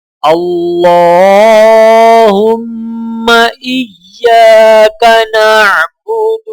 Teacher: اللہ کے لام کو موٹا پڑھا جائے گا، لام کے اوپر کھڑا زبر ہونے کی وجہ سے ایک الف کے برابر کھینچ کر پڑھا جائے گا۔